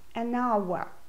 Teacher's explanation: This is because the H at the beginning of hour is silent.